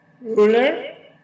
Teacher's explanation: it does not roll as much, right? It doesn't roll like our Indonesian R.